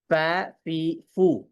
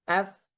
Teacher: কিন্তু যদি আমরা ফাকে যদি আমরা সুকুন করি তাহলে কি আফ, বাতাসের পরিমাণ অনেক বেশি, মানে তখন বোঝা যায় যে এটি বাতাস এবং আওয়াজের সমন্বয়ে উচ্চারিত হচ্ছে